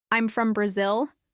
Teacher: But if I use a rising intonation, I'm from Brazil. It sounds like I'm unsure.